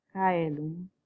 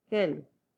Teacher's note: Una de las vocales que se consideraba como vocal tal cual era este grupo de diptongo, de AE, el cual se vuelve E, es decir, se simplifica en el sistema vocálico mismo.